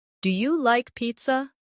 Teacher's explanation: Make sure your voice rises at the end.